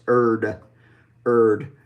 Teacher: we're taking the front part of our tongue, we're putting it behind our top front teeth, and we're stopping the air and then releasing it, and it's voiced, making the D sound.